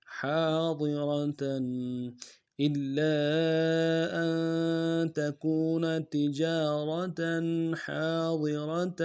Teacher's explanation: کریں گے، ہا کے سالف مدہ ایک دال میں کھینچیں گے، ضاد کو موٹا ادا کریں گے، را کو موٹا ادا کریں گے ، تا کے اوپر تنوین غنہ کریں گے، حاضرة إلا أن